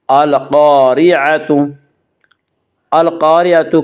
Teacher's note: القاریعۃ، القاریعۃ الف مدہ، الف ہمیشہ مدہ ہوتا ہے، الف سے پہلے ہمیشہ زبر ہوتا ہے، الف مدہ کو ایک الف کے برابر کھینچ کر پڑھے گی